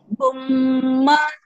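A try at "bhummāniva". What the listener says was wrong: Okay, the I is short. Bumaniva.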